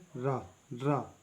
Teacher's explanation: नोक मसूड़ों के समीप कंपन करती है, नोक मसूड़ों के, नोक मसूड़ों को कंपन करती है, जैसे रा, रा।